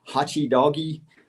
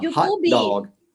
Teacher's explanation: the additional vowel sound at the end of words that end with consonant sounds in English